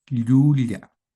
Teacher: Hay un contacto del paladar con la parte media de la lengua. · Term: doble L